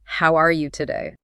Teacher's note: Did you feel your pitch go up on the word today?